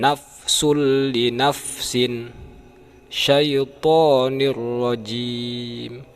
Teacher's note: Idgham bilagunnah ini tanpa memakai dengung